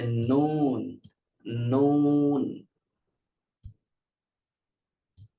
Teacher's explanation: অগ্রভাগ উপরের দুই দাঁতের গোড়ার সাথে যুক্ত হবে। জিহ্বার অগ্রভাগ সামনের উপরের দুই দাঁতের গোড়ার সাথে যুক্ত হবে।